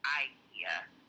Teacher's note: It would be the long I, the IKEA in America.